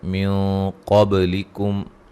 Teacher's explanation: اصلی ہے، من قبلکم، یہاں نون ساکن کا موٹا اخفا ہے، قاف کو موٹا ادا کریں گے، با پہ قلقلہ کریں گے ، میم ساکن کا اظہار ہے، اذا آتیتموہن، ذال پہ مد